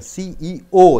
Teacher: third letter should be stressed